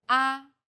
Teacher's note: The first tone is steady with a high pitch.